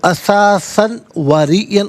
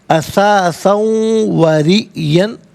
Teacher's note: تو اسے ہم یوں نہیں پڑھیں گے قرنن نہیں، قرنہم قرنہم من قرنہم احسن اساسا و ریئن. اساساً میں سا پر 2 زبر کی تنوین ہے، اسے واو کے ساتھ ملا کر واو کی آواز کو ادا کیا جائے گا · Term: یرملون کا قاعدہ